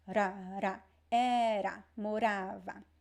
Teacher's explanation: So the R right before a vowel, it should always sound like this. It is a fricative R.